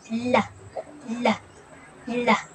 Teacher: Ang kasunod naman ay ang L, napabilang sa pagilid na may tinig at ito ay binibigkas na la, la, la.